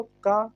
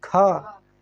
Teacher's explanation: अब दो माँ कहाँ ज़्यादा हवा आवाज देखा से बोलो, तो बोलो खा, पहले का बोलो का, फिर खा, तो का की अपेक्षा खा में ज़्यादा हवा निकल रही कि नहीं? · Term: महाप्राण